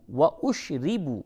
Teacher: شین پیش اش را زری با واو پیش بو و اشربو را کو باریک کر کے پڑھیں زیر ہے و اشربو واو مدہ ہے اسے تھوڑا سا کھینچیں و اشربو